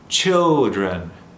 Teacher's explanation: Barely any L at all.